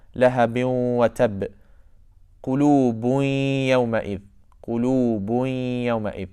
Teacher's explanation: It's like kind of half of the noon is still remaining, the ghunnah. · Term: idghamun naqis